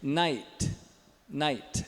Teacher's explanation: Tem um ditongo aqui, né? É N-A, o I rápido e o T.